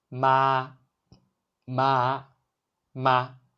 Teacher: The pitch is high and flat, like singing a sustained note. Keep your voice steady at a high pitch, similar to holding a musical note la. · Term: first tone